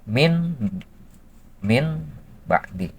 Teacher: menukarkan nun sukun ke bunyi mim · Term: iqlab